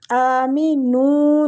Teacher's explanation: قِيلَ لَهُمْ آمِنُوا، حمزہ کے اوپر بھی کھڑی زبر ہے تو حمزہ کو ہم کھینچیں گے، آمِنُوا نون کو کھینچیں گے، وہ مد ہو رہا ہے